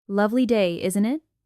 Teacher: Stress lovely and add a light rise on, isn't it? To invite agreement.